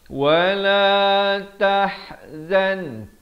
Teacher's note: tah di pertengahan kerongkong